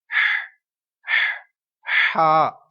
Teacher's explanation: اور یہ ہا حلق کے درمیان والے حصے سے ادا ہوگا. اس کی آواز اس کو پڑھنے سے پہلے کچھ ایسی آواز آئے گی ہا.